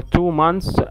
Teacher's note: لو جمعتها two months, بتقول months بس, TH تبقى silent